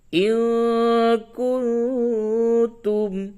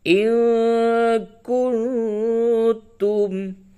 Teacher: نون ساکن کے بعد کاف، نون ساکن کے بعد تا، یہ اخفا. کاف بھی حروف اخفا ہے، تا بھی حروف اخفا پورے 15 ہوتے ہیں، اس کو یاد کر لیں.